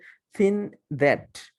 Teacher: জিহ্বার অগ্রভাগ আমরা দাঁতের মাঝখান থেকে একটু হালকা বের করে দিই। হ্যাঁ, দা সাউন্ডটাকেও ঠিক ওভাবেই আমরা জিহ্বার অগ্রভাগটা একটু দাঁতের মাঝখান দিয়ে হালকা করে বের করে দিই, দা সাউন্ড।